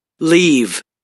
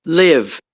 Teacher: the first one is more front and more high, and the second one is more centralized.